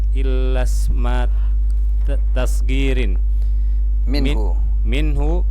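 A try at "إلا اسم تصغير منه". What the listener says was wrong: Enggak, jangan diputus itu ya. Itu satu kata. Illasma tasghirin minhu.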